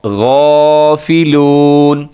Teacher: غین موٹا پڑھنا ہے، ساتھ الف بھی موٹا ہوگا